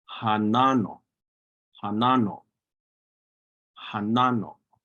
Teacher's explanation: Hanano with that glottal stop o, or sometimes it's just pronounced hanano.